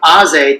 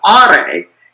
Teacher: But in the Noldorin dialect, the letter Z, so the original name of the letter was Aze, meaning day. But in the Noldorin dialect, over time, the Z sound came to be pronounced like R